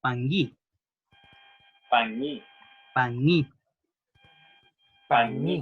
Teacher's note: Recuerden que la G no es una G, es una nga, gangoso. Esta de calamardo, recuerden, o llanto de bebé.